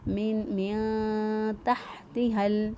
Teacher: نون ساکن کے بعد دیکھیں نہ حرف حلقی نہ حرف یرملون میں سے کوئی حرف ہے، نہ ہی با ہے، لہذا اخفا کریں گے۔ نون ساکن کی آواز کو چھپاتے ہوئے ہم نے نون کو ادا کیا